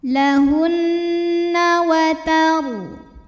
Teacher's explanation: Ra sukun dibaca secara tafkhim karena huruf sebelumnya fathah, maka bacanya tebal.